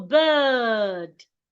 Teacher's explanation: because of the R beside the I, the sound becomes longer. So you go bird.